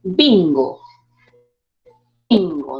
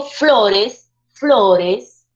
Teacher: Sube la entonación de frente en la palabra, bingo, bajo. Entonces la mayor fuerza de voz radica en la penúltima sílaba. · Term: palabras graves o llanas